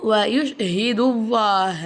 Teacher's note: அல்லாஹ் அப்படிங்கிற வார்த்தையை வாய் நிறைய காற்று வச்சு நம்ம உச்சரிக்கணும்